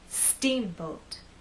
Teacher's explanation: I want the first part to be loud and the second part to be softer